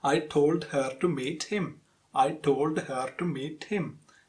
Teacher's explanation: each syllable, each word is getting same prominence. So, that shouldn't be happening with your English. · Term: syllable-timed rhythm